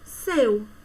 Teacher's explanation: O E vai ser uma vogal e o U vai ser uma semivogal. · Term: ditongo decrescente